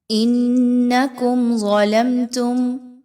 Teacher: میم ساکن کے بعد تا کا حرف آ گیا، یہاں پر بھی اظہار کیا جائے گا، میم پہ غنہ نہیں کرنا